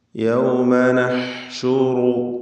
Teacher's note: ഈ വചനത്തിലെ ഹായിൻ്റെ ഉച്ചാരണം പ്രത്യേകം ശ്രദ്ധിക്കുക. തൊണ്ടയുടെ മധ്യമാണ് അതിൻ്റെ മഖ്റജ്.